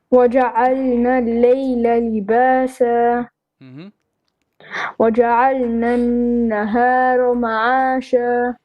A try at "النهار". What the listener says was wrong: Make your ra clear. Nahar.